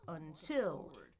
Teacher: Really, I should be saying the second syllable stressed. Until. Notice my pitch is going higher. I'm holding it a bit longer.